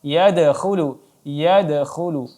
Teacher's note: dipantulkan secara sedikit saja ringan yadkhulu karena dia qalqalah sughra, tidak qalqalah wusta ataupun kubra.